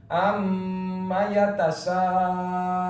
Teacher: Jadi membacanya jangan dilangsungkan, jangan amma yatasa, tapi ditahan dua harokat. Amma yatasaalun. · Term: gunnah